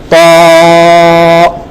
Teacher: উচ্চারণটা সেম জায়গা থেকে, জিহ্বার আগা, উপরের দাঁতের গোড়া, কিন্তু মনে রাখতে হবে যে যখন আমরা ত উচ্চারণ করব তখন আমাদের জিহ্বাটা ফুলে যাবে। কারণ কি, এটা অসাউন্ড, প্রত্যেকটা অসাউন্ড অক্ষরের উচ্চারণে জিহ্বাটা মোটা হয়ে যায়, জিহ্বাটা মোটা।